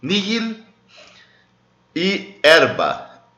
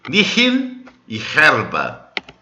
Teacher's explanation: O H na pronúncia eclesiástica ele é mudo, tá bom? Ele é um pouquinho aspirado ainda, mas ele é quase um mudo.